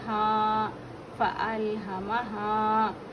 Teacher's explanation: ہا الف حرف مدہ ہے ایک الف کے جتنا کھینچ کے پڑھیں گے